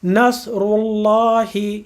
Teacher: زبان اوپر جائے گی، پیش کے ساتھ پڑھتے ہوئے ہونٹ آگے رہیں گے، تو یہ لام موٹا پڑھا جائے گا